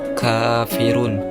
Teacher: Huruf kaf keluar dari pangkal lidah sedikit ke depan.